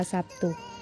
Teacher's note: kata Sabtu ini berfokus antara huruf B dan t di mana B bersuara dan t tidak bersuara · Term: asimilasi regresif